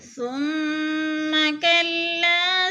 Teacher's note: ثم کی میم مشدد ہے، سختی سے پڑھیں گے، جمع کر، اور لمبا نہیں کرنا کیونکہ زبر ہے